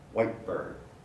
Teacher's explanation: it does not become nasal it does not become voiced it only changes its place of articulation